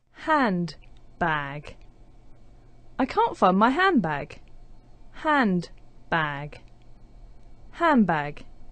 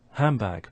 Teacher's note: because of elision, the d sound disappears. That puts the n sound next to the b sound, and it starts to change to a m.